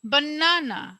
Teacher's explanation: যেহেতু প্রথমটা আনস্ট্রেস পরেরটা অবশ্যই স্ট্রেস হবে বানানা আমরা এন এর উপরে স্ট্রেসটা করছি এখন আমি যদি বলি